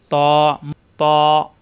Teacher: জিহ্বার আগা উপরে 2 দাঁতের গোড়ায় লাগবে, কিন্তু মোটা হবে